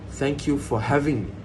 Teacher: you, for, and me are reduced and shortened